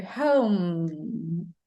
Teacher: You pronounce the consonant sound. So home. And it's different from the M sound in Portuguese. You see, in English, you have to close your lips.